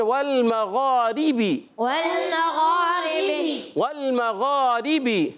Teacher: غین ادا ہوتا ہے حلق کے اوپر والے حصے سے، حرف حلقی میں سے بھی ہے اور حرف مستعلیہ میں سے بھی ہے، موٹا بھی پڑھنا ہے